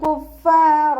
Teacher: മഖ്റജ് നമ്മുടെ മേലെ മുൻപല്ലിൻ്റെ അറ്റവും താഴെ ചുണ്ടിൻ്റെ ഉൾവശത്തെ നനഞ്ഞ ഭാഗവും ചേർന്നിട്ടാണ് പുറപ്പെടുന്നത്. ലൈറ്റാക്കാൻ ശ്രദ്ധിക്കുക കേട്ടോ.